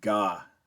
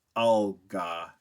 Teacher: So if you say ga, and then you say al-ga, the G is moved back in your mouth quite a bit